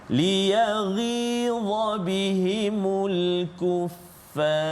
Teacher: Maka fa itu baris atas, maka kita baca tebal. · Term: tafkhim tebal